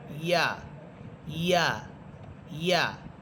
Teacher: ইয়া এটা হচ্ছে জিহ্বার মধ্যখান উপরের তালুর সাথে লাগবে